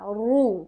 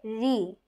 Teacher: র জবর র র জবর র র মোটা। র জের রি, র জবর এবং পেশে যখন আমরা পড়বো তখন মোটা হবে আর যখন জেরে পড়বো তখন পাতলা হবে। র র জবর র মোটা, যখন জের দিয়ে পড়বো তখন রি নর্মাল পাতলা।